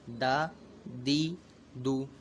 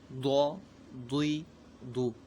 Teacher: دال جو ہے تو اس کو جب ہم ادا کریں گے تو باریک پڑھیں گے اس کو، جبکہ ضاد یہ حروف مستعلیہ میں سے تو اس کو ہمیں پر پڑھنا ہے